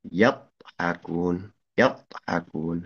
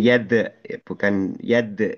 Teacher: kalau huruf dod itu yang dilibatkan adalah lidah samping, kiri dan kanan, ataupun salah satunya